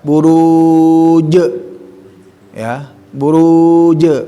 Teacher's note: Masuk ke til, alif lam qamariyah, buruj itu dikasih 4 ya. Masuk langsung ke jim, tapi harus qalqalah ya.